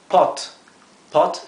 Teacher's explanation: en realidad la o se pronuncia un poco más abierto que en el español